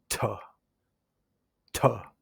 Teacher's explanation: Your jaws raise and then lowers a little bit. And your tongue starts touching the inside of your teeth and then retracts quickly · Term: aspirated T